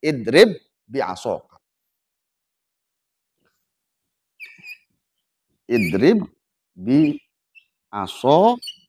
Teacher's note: Memasukkan huruf ba yang pertama kepada ba yang kedua. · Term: idgham mutamatsilan